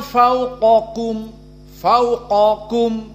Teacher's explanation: di sini dalam keadaan atafkhim karena Q dari huruf alistila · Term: at-tafkhim